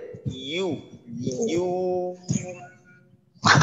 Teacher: ইউ যেভাবে উচ্চারণ করি ঐভাবে না জিহ্বার মধ্যখান থেকে নরম ভাবে